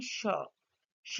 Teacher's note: In this figure we can clearly notice the narrowing of the vocal tract between the tongue blade and the back part of the alvular ridge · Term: fricative